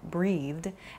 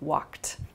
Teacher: So there are 3 past tense verb sounds to listen for: an id sound, started, a soft D sound like breathed, and then a more hard T sound like walked.